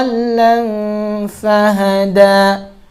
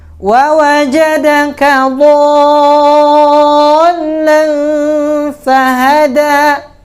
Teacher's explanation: Mad lazim kilmi mutsaqqal, panjangnya 6 harokat.